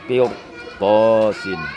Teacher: khususnya ra dibaca tebal, sebelumnya kasrah ya, dan setelah ra yang sukun ada huruf isti'la ya.